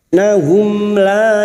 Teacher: Innahum mim sukun pertemuan lam adalah idzhar syafawi. Mim sukun dibaca dengan jelas tanpa bersenandung.